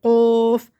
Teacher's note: قوف، اس کو موٹا پڑھنا ہے، قوف، منہ بھر کے ایسا جوف بنا کے